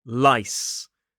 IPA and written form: laɪs (lice)